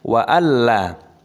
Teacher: Perhatikan, kita identifikasi nun sukun bertemu dengan lam, idgham bila gunnah, dibaca jelas, tidak boleh berdengung, dimasukkan